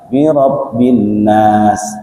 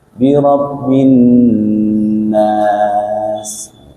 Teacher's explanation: Dan karena nun itu sifatnya adalah gunnah, gunnah itu berdengung, maka harus digunnahkan. Jadi birabbin, itu namanya dengung ya.